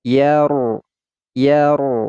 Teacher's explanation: huruf ro sukun kita baca secara tafkhim atau tebal sebab sebelum huruf ro adalah huruf yang berharakat fathah